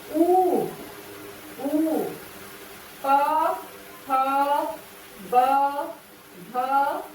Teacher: जिन वर्णों का उच्चारण दोनों ओठों के आपस से मिलने से होता है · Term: ओष्ठ